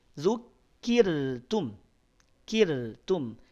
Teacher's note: ro sukun, sebelumnya ada kasrah, maka ro-nya tipis. Tidak zukirtum, tapi zukirtum, kirtum.